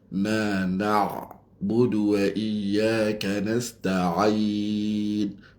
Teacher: Itu ain daripada halqum. Wastul halqi.